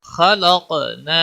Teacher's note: انزلنا، خا زبر خا، لام قاف زبر لق، نون الف زبر نا، خلقنا، خا پور پڑا جائے گا، قاف بھی پور پڑا جائے گا، اور قاف پر قلقلہ بھی ہوگا